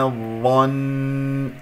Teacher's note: إلا اتباع الظن، إلا اتباع الظن، وقفت طبعا على نون مشددة، فسوف أطيل الغنة لكي أنه يحس السامع أنه هذه في الأصل نون مشددة